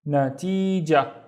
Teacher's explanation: Do I really pronounce the ta marbuta? Not really.